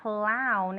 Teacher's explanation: it's a k sound in the beginning it's also a throat sound